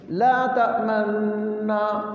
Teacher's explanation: تو تلفظ کے اس تھوڑے سے فرق کو بھی محفوظ کیا گیا، حتیٰ کہ بعض جگہ تو اس سے بھی باریک فرق محفوظ کیا گیا، وہ یہ کہ لا تأمننا اصل میں تھا لا تأمنونا، نون کا نون میں ادغام ہوا، تو اس ادغام کے ساتھ آپ صلی اللہ علیہ وسلم نے ہونٹوں کو تھوڑا سا گول کیا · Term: ہونٹوں کا گول کرنا